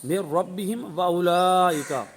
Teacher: تو جب ہم وصل کریں گے تو وصل کی صورت میں میم ساکنہ کے بعد واو آیا تو اس صورت میں اظہار شفوی والا قاعدہ جاری ہوگا، یعنی یہاں پر غنہ نہیں کریں گے